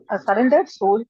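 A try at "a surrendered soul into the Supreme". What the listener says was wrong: Your voice is not coming proper. It's cutting. Why your voice is coming like this? Not clear. So you are running so fast. Read properly, na?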